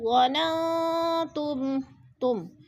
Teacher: ما ظننتم، ما پہ الف مدہ، ظننتم نون ساکن کے بعد تا حرف اخفا میں سے ہے تو ادھر اخفا کریں گے، آواز کو ناک میں چھپا کر پڑھیں گے